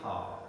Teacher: It is glottal because it is pronounced in the glottis. Fricative because the passage is narrowed down. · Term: glottal fricative